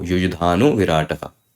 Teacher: This visarga changed into o. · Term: utva sandhi